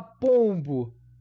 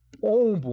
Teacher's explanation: sinta no seu nariz, quando eu falar ombo, o seu nariz vai tremer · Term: OM anasalado